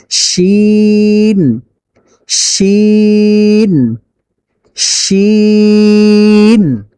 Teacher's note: জিহ্বার মধ্যখান তার বরাবর উপরে তালুর সঙ্গে লাগিয়ে বলুন শিন। শিন বলার সময় মুখের ভিতরে কোনো বাতাস জমা থাকতে পারবে না, সব বের হয়ে যাবে।